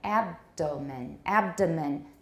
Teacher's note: The stress is now on the first syllable.